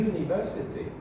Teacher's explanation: There is no touching. The tongue gets very close to the palate, but it doesn't touch.